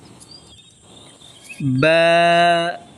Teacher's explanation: تو دونوں ہونٹ مل کر کے با ادا ہوتا ہے